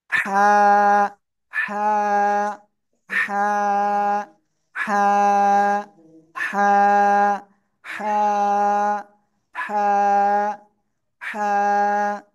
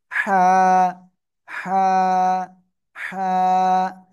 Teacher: গলা ভিতরে আওয়াজটাকে একটু চেপে ধরে একালিফ টানিয়া মুখ দিয়ে হালকা বাতাস বের করে একালিফ টানিয়া উচ্চারণ করতে হবে।